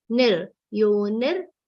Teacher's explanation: Yo is a long sound, ni is a short sound, ni is followed by half ra.